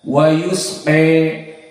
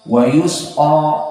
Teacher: imalah dari fathah mendekati kasrah, dari alif mendekati ya. Adapun Hafs dengan fathah wa yusqa, maka inilah yang diinginkan dengan qiraah al-Kisai al-imalah al-kubra.